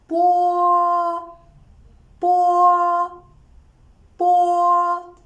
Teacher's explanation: Bo is an unaspirated and bilabial plosive sound. When we pronounce it, long air is compressed by the closure of the lips.